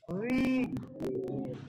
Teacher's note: জিহ্বার আগা সামনের উপরে দুই দাঁতের আগার সঙ্গে লাগিয়ে তাহলে উচ্চারণ করতে হবে